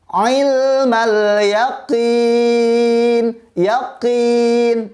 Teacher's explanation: Yaqin dari tenggorokan. Huruf qaf keluarnya dari tenggorokan.